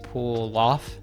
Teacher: the L connects to the off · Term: connected speech